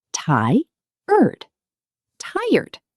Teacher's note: Tired has two syllables, but they blend together fast.